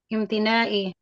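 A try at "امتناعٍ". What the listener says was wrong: Tanwin tuh. Tanwin kan.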